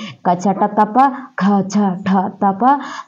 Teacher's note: నాదతంత్రులు అనేవి అసలు ఎంత మాత్రము కంపించకుండా నేరుగా గాలి బయటికి వస్తూ దానితో పాటు ఈ అక్షరం పలకబడిద్ది గాలి నేరుగా బయటికి వస్తూ ఈ అక్షరాలు పలకబడతాయి ఆ విధంగా పలకబడే అక్షరాలకే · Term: శ్వాసాత్మకాలు